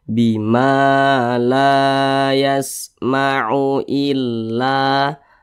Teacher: ini namanya Mad thii atau mad asli panjangnya dua harakat atau kira-kira dua ketukan Bima La yasmau illa la dibaca panjang nah penjelasannya masih di